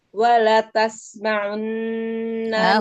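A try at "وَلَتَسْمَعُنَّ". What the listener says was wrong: Huruf ain domanya. Monyongkan lagi. Wala tasma'unna. Unna. Monyongkan lagi domanya.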